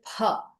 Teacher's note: It's not that it is P. That means you say the P and then you put more air into it and say P.